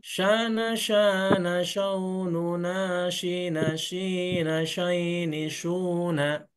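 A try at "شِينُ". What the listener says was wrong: Oke, nah ini kalau yang ini udah pas.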